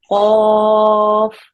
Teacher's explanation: make sure that your tongue goes right up to the back of your throat and blocks it all off